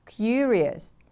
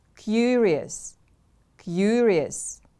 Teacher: The stress is on the first syllable.